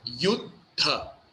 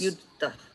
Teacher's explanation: So you see, this one has first D is just a regular D, and the second D is DH